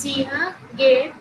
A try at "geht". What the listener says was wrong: गेहेट, गेहेट, गेहेट यानी GEHET नहीं है।